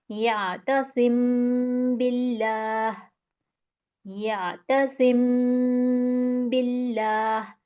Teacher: तो गुना भी करना है और होठों में छुपाना भी · बा आ रहा है तो यहां मैं इसको किस तरह करूंगी मीम को छुपाना है मैंने अपने होठों में